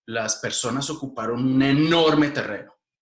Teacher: Y sube la prominencia acentual de la palabra enorme.